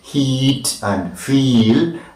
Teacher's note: front, close, unrounded, long sound is the E sound in feet